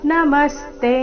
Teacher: ನಮಸ್ತೆ ಮ ಮೇಲೆ ಆಘಾತ ಕೊನೆಗೆ ತೆ ದೀರ್ಘ